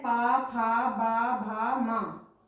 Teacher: हमारे दोनों होठ स्पर्श कर रहे हैं एक दूसरे को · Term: ओष्ठव्य व्यंजन